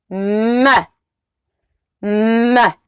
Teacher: A bilabial nasal means that we produce the sound by keeping the lips together to block the sound out, but taking it up through the nose while using our vocal cords to create that buzz · we keep those lips together. Start vibrating those vocal cords. And as you open the mouth, you're taking it through the nose.